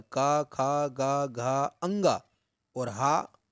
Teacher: तो पहला सूत्र है अकोह विसर्जनीयानाम कंठः, अकोह विसर्जनीयानाम कंठः, अकोह विसर्जनीयानाम कंठः, अर्थात आ कवर्ग, कु यानी कि कवर्ग, का खा गा घा अंगा, और हा और विसर्ग, इतने वर्णों का जो उच्चारण स्थान है, उच्चारण करने की जगह है, वह कंठ है।